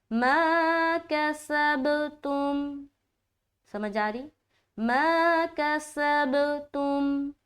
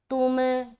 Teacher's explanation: ता को मीम से मिलाकर आवाज स्टॉप।